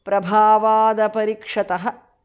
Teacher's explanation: The t in the end changes to d because of sandhi.